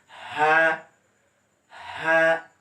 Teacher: কণ্ঠনালীর শুরু থেকে হা উচ্চারণ হয়, অর্থাৎ এখান থেকে একটু বাতাস দিবেন যাতে হা উচ্চারণ না হয়, হা, হা।